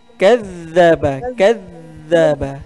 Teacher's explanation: huruf za tu ibu perlu kita keluarkan hujung lidah. Hujung lidahnya terkeluar sedikit aja. Jangan dikeluarkan semuanya.